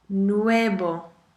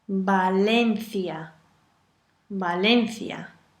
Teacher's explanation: When do you pronounce a V as a B? All the time.